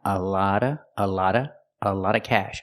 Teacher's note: the T makes a fast D sound